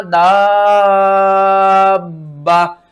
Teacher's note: اس مد کو فل کھینچنا ہے 5 الف کے برابر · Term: مد لازم